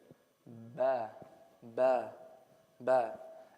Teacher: I cannot pronounce the letter ba without closing my lips together. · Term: letter of the lips